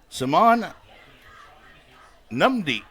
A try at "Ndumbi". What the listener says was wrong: Simon Dumby. The N is silent. N is silent, sir.